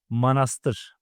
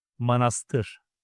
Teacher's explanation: Last vowel is ı. It's a back vowel.